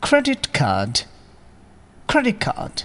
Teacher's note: এখানেও অ্যাসিমিলেশনের পরিবর্তে ইলিশন করাই ভালো, অর্থাৎ প্রথম শব্দটির শেষের t সাউন্ডটি গায়েব করে দিন